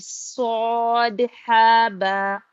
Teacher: صاد میں پر کریں گے اور سیٹی کی بھی آواز آئے گی